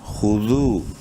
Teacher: خو پیش خو، منہ بھر کے پڑھنا ہے، دال واو پیش ذو، واو مدہ ہے، دال کو ایک الف کے برابر لمبا کریں گے